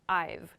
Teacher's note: present perfect tense is about this reduction this shortening of sounds when we're using have as in i have or we have we make a v sound in fast speech